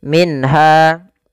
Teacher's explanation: di sini izhar halqi minha ada dua ee apa namanya ada nun sukun bertemu dengan huruf ha suara nunnya harus dibaca dengan jelas tidak boleh ditahan